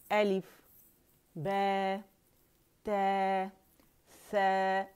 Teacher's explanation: آواز اوپر جائے گی، سائیڈ ویز نہیں جائے گی. امالہ نہیں کرنا، امالہ صغرا بالکل نہیں کریں گے